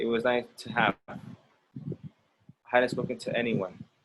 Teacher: when you are speaking naturally, you don't say to, you say t or t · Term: Only the t sound